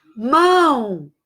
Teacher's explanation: O O tem o som de U, portanto, o O é semivogal.